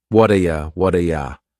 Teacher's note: This is really typical of American English, where a T that's surrounded by vowel sounds is going to change to a D. It's called a flapped T, and it just rolls off your tongue in a smooth way. · That T at the end of the word what is going to change to a D sound. This is really typical of American English, where a T that's surrounded by vowel sounds is going to change to a D.